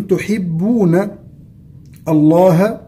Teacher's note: لام اسم الجلالة سبقت بنون مفتوحة إذا تفخم لامه، نقول تحبون الله وليس تحبون الله.